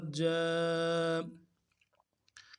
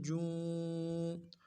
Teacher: جیم کھڑا زبر جا، کھڑا زبر کو ایک الف کی مقدار میں کھینچ لیں۔